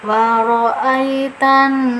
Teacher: ada lam bertemu dengan salah satu huruf syamsiah yaitu nun, jadi langsung dimasukkan saja lamnya, tidak usah dibaca. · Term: idgham syamsi